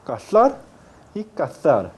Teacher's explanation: En América Latina no hay diferencia articulatoria entre ambas palabras, casar y cazar.